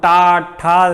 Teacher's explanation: जब हम टा, ठा कोई भी अक्षर बोलते हैं तो हमारी जीभ उल्टा खड़ी होकर तालव्य में जाके ऊपर मूर्धा का रूप लेती है। ऐसे जब हमारी जीभ पलट जाती है तो उसे हम मूर्धा पोजीशन बोलते हैं। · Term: मूर्धन्य